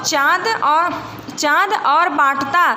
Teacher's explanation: शब्दों में चंद्र बिंदू है इसका उच्चारण नाक और मुंह से किया जाता है